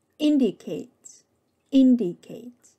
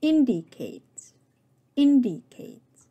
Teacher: The primary stress is on the first syllable in. The vowel in the first syllable is the short A, as in ship, skip, and mister. · The vowel in the first syllable is the short A, as in ship, skip, and mister. The secondary stress, which is less strong, is on the third syllable Kate. The vowel in this syllable is A, as in play, hate, and shake.